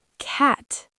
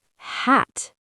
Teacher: In American English, the short A is very open and wide. Your mouth opens wide when you say it, like ah. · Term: short A sound